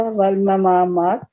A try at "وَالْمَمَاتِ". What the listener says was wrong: دو میم ہے، والممات.